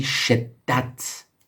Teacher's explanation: While we use it on top of a character, what it does is that it adds stress in pronouncing the character, as if we had two of the same characters. So this, without the suppose we didn't have the sun, it would be shadat. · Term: tashdid